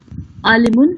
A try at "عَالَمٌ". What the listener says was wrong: اس کو غور کیجئے، یہ عالمن ہے، لام پہ زبر ہے.